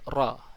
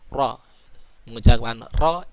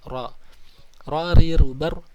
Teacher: Maksudnya ialah ujung lidah tergetar ketika mengucapkan huruf ra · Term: tikrar